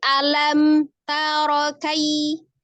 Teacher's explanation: ketika dia harokat yang pendek, walaupun dia terpisah kata, tidak terjeda.